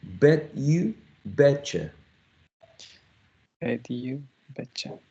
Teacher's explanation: the reduction is basically taking a full vowel sound, in this case a long u, and reducing the vowel sound to a schwa, all right, a weaker vowel.